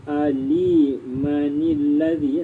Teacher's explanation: Keadaan ini berlaku ketika mana kalimah awalnya hamzah wasal bersambung dengan huruf mati sebelumnya seperti lafaz nun mati daripada tanwin yang bersambung pada akhir kalimah. Oleh itu digerakkan huruf yang mati itu dengan baris bawah kerana pertemuan dua tanda sukun dan gugurlah hamzah wasal secara lafaz